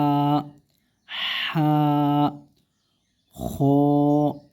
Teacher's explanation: এটা হলকের শেষ ভাগ হইতে উচ্চারণ হবে